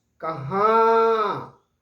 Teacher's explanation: कहां, अब गौर कीजिए उस पर। कहां, मुंह से भी आवाज निकल रही है और नाक से भी एक कंपन जैसा हो रहा है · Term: चंद्र बिंदु